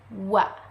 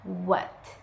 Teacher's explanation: Produced consonant sounds when the back part of the tongue contacts the soft palate or velum and lips come close each other. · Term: Labiovelar sound